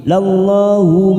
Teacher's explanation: lam jalalah didahului fathah kita baca tafkhim